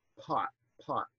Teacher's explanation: there's a little puff of voicelessness that persists into the into the following vowel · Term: voiceless stops